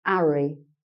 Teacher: So if you have a name like Harry, would be pronounced Harry, and have, where you make the H sound, have. So the Cockney speaker tends to miss off the H.